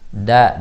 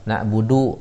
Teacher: Nah, kebanyakan di Indonesia itu ujung lidahnya yang salah menempel. Jadi ada yang ujung lidahnya menempel ke langit-langit, jadinya dalnya tebal.